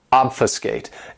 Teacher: This verb has 3 syllables, and the stress is on that first syllable